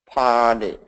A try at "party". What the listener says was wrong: Make it more R. Make the R long because we're focusing on R.